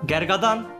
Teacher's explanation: E'den A'ya ünlü kalınlaşması var. E-A, Gergedan.